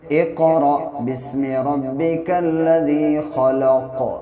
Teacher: حمزہ ساکنہ کو جھٹکے کے ساتھ پڑھتے ہیں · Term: جھٹکا